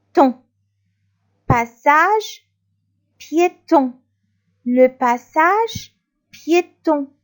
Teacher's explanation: Puis on a voyelle nasale à la fin.